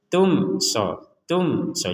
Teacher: mim sukun bertemu SH kita baca dengan jelas